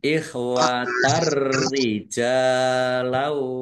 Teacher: Langsung masuk ke huruf ro, ya, ditandai roknya ada tasdidnya, roknya dibaca double, ya, dan tidak mendengung. Jim fathah alif mat tobi'i panjang 2 harokat. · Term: idgham bila gunnah